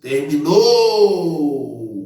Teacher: Então, a sílaba tônica vai ser o no.